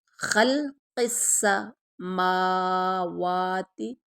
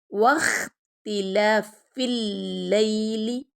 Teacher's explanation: وا کو جب ادا کرنا ہے تو وا کو لپس کو گول کرنا ہے